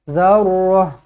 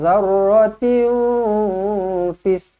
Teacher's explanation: Kalau berhentilah zarrah, tukarkan ta menjadi ha.